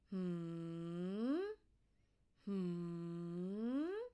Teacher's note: From high to low, falling tone.